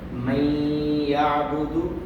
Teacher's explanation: نون ساکن کے بعد یا ہے، یا حروف یرملون میں سے ہے. یہ نون یا میں داخل کر دیں گے اور غنہ کریں گے، ناک میں آواز لے جائیں گے.